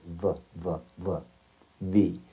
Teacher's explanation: when you say these two letters especially V you realize that your top teeth strike your bottom lip somewhere in the middle of the fleshy area